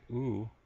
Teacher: tongue is actually right at the front of my mouth whereas when I say o I actually pull my tongue back and it's now located to the back of my mouth